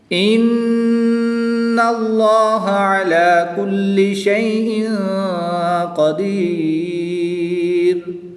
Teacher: نون مشدد میں غنہ کر کے پڑھیں گے۔ اس میں جلالت اللہ عز و جل کے لام سے پہلے حرف پر زبر ہے تو اس لام کو پر یعنی موٹا پڑھیں گے۔